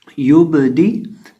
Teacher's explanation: अब इस लफ्ज़ के अंदर हम बा को हिलाएंगे, जिस तरह हमने पिछले लफ्ज़ के अंदर खौफ को हिलाया था, यहाँ हम बा को हिलाएंगे क्योंकि बा साकिन है और बा हरूफ कलकला में से है